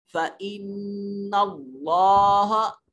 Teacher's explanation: فإن نون مشدد ہے، غنہ واجب ہوگا. کلمہ اللہ اور اس میں جلالت سے ما قبل مفتوح ہے، اس میں جلالت کو موٹا اور پر کر کے پڑھا جائے گا.